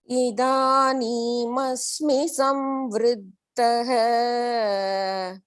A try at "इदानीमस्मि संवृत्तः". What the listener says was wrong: You have to cut that end. Idanimasmi samvrittah.